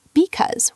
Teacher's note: In because, because, where the first part is kind of a schwa-like sound.